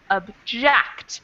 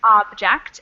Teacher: the second one is object lawyers often object so the second the second syllable in the second word is the emphasized one and in the first word the first syllable is emphasized